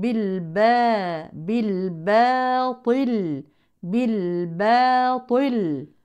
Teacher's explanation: بالباطل الطاء فقط هي الحرف المفخم البعض للاسف يفخم الباء ومعها الالف وطبعا هذا خطا لانها مرققه